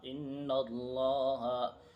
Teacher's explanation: حمزہ نون زیر ان، نون لام زبر نل، ان لام کھڑا زبر لا، ان اللہ، ہا زبر ہا، ان اللہ۔ انا پہ غنہ بھی ہوگا، کیونکہ نون پہ تشدید ہو تو غنہ ہوتا ہے